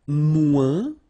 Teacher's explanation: we don't pronounce the final S